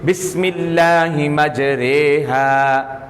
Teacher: یا کی طرف مائل ہونے کی وجہ سے باریک پڑھی جاتی ہے · را یہ را ہے جو زیر اور یا کی طرف مائل ہو رہی ہے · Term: امالہ